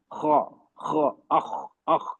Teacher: जबान की जड़ को नरम तालू की तरह उठा रहे थे जबान का बीच का हिस्सा नहीं जबान का जड़ रूट रूट